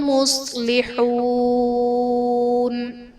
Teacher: مصلحون میں صاد حرف مستعلیہ ہے، پر پڑھا جائے گا، واو ساکن سے پہلے حا پر پیش ہے، واو مدہ کا قاعدہ، اور حرف مدہ کے بعد عارضی سکون یعنی وقف کی وجہ سے ہم نون کو ساکن کریں گے، تو یہاں پر مد عارض کا قاعدہ ہوگا۔